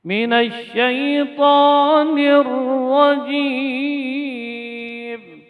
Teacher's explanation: Huruf ra ketika bertasydid maka disembunyikan getarannya.